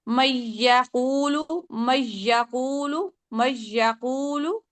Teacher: من نہیں، ابھی جب پڑھ رہے ہیں تو میں کر رہے ہیں، میں نون تو ابھی بھی سکپ ہو رہا ہے نا، میم ڈائریکٹ یا سے مل رہا ہے، تو نون کو میم کو ڈائریکٹ یا سے ہی ملائیں لیکن غنہ نہیں کریں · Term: عدم غنہ